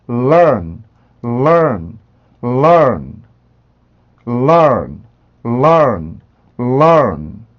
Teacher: 그래서 여기에서 이렇게 움직여서 이 N 발음 소리를 만들어 주셔야 되는데 발음에서 N으로 혀를 밀어내시는데 공기를 입 밖으로 꺼내지 말고 코로 이렇게 빼내 주셔야 돼요.